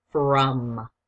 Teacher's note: That O can make a schwa sound.